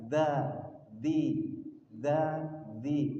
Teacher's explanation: Jadi kalau dilihat di bagian Bapak Ibu yang pegang itu hames yang bagian atas tidak ada huruf dalnya maka kita tidak boleh mengucapkan dza dzi ada hembusannya enggak boleh tapi kuat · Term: huruf dzal